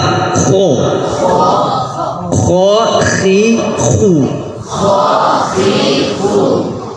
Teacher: Huruf kho ketika dia berbaris fathah dan dhammah tebal. Ketika dia berbaris kasroh itu istilahnya agak turun.